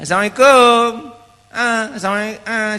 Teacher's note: Memang kita punya logat orang Melayu ni, huruf Ain kita di hidung. · Dia tak bunyi pun Ain dia. Dia Assalamualaikum.